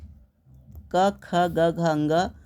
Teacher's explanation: क वर्ग का जो उच्चारण स्थान है वो है कंठ